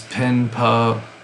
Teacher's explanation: you have a nasal N, na, which is pronounced in the front of the mouth, and then you have pa pronounced with the lips